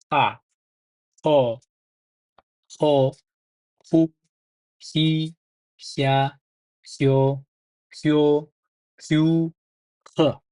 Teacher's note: Bu harf H, yumshoq H, o'ta yumshoq tarzda bilinar-bilinmas talaffuz qilgan yaxshiroq buni.